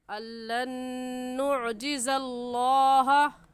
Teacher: नुअजिज़ल्लाह में लफ्ज़ अल्लाह से पहले ज़बर आ गया, इस वजह से इस लफ्ज़ अल्लाह को पुर यानी मोटा करके पढ़ेंगे। और मोटा करने का तरीका कि आपके दोनों होंठ गोल हो जाए। अल्लन नुअजिज़ल्लाह पढ़ना सही होगा, नुअजिज़ल्लाह कहना गलत होगा।